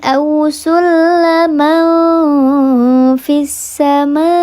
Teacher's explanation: Aw waw sukun sebelumnya harakatnya fathah, dibacanya dilembutkan saja, tidak dibaca panjang, namanya harfulin